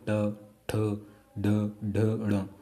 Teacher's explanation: अब आप देखिए टा बोलेंगे ना, आप टा बोल के देखिए ट, तो आपकी जीभ क्या हुई, पहले अंदर जाएगी, बाद में बाहर आके ऊपर टच करेगी, देखिए ट, ट बोल के देखिए आप, ट, ठ, ड, ढ, ड़, तो जीभ पहले पलटेगी अंदर की ओर, फिर एकदम से बाहर आएगी और टच करेगी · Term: मूर्धन्य